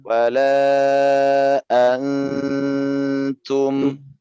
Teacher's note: Pertama dia panjang ya, wala an. Nah, di sini ada ikhfa atau dengung ya. Jadi ditahan dia 3 harokat.